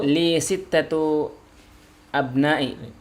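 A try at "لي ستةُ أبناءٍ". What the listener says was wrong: Tanwinnya jangan dihilangkan. Tanwinnya jangan dihilangkan. Li sittatu. Iya, li sittatu abna'in.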